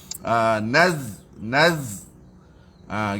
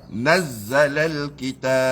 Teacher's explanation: Nun masuk pada zai itu bunyikan huruf zai dengan safir, dia ada siran.